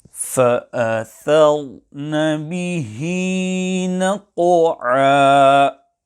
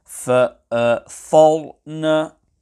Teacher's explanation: When reciting the word فَأَثَرْنَ, the ra sakinah will be pronounced full mouth. However, care should be taken to ensure that the letter tha before the ra sakinah is not pronounced full mouth